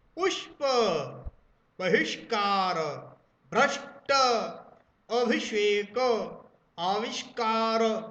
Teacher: बिल्कुल झटके से जीभ पीछे जाती इस शाह को बोलते समय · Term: मूर्धन्य शाह